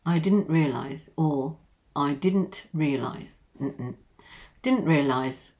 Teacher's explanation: stop T just to make it a little bit quicker when we speak quickly